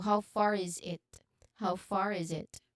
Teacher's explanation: The sounds of different words are connected to each other. Now the final it is very quick and it is unstressed.